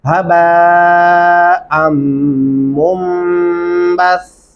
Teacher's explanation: बा के सामने 4 अल्फी मद्दा है, इसलिए 4 अलिफ के बराबर तक लंबा करेंगे